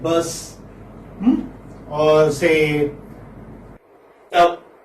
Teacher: this is central vowel because this is there within this central unrounded because your lips do not round. So this is central unrounded vowel. · So this is central unrounded vowel just above open.